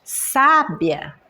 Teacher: Então por que sábia o acento é no primeiro A? É porque a sílaba mais forte dessa palavra, quando eu pronuncio, é a primeira sílaba.